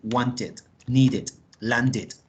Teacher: Agregamos una sílaba extra con el sonido de it